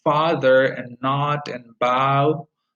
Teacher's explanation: this a low back tense unrounded vowel